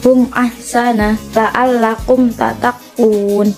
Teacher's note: Idhar syafawi, yaitu mim sukun bertemu dengan huruf hijaiyah kecuali huruf mim dan ba. Cara membacanya tidak boleh dengung, dan huruf mim sukun harus dibaca jelas dan baik, dan harus lebih dijelaskan atau diizharkan lagi ketika mim sukun bertemu dengan huruf wawu dan fa.